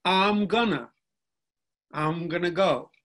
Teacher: some dialects monophthong guises - ah okay so I becomes ah this is very typical of the southeastern American English dialects where the pronoun I becomes ah